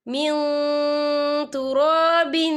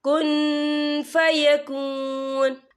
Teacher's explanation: نون ساکن کی آواز کو ناک میں چھپائیں گے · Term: اکفا